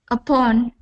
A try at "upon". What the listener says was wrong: So instead of upon, it's upon with an ah sound. Sounds like a pawn. Upon.